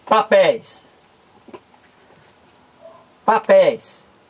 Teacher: Papéis é uma palavra oxítona. Por quê? Porque o acento aqui, tônico, a sílaba mais forte é a última.